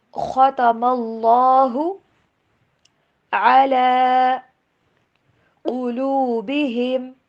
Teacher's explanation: یہاں پہ زبر ہے سو اللہ کا نام موٹا کر کے پڑھیں گے